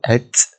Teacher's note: ada angin yang keluar dekat huruf ta tu. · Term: sifat hams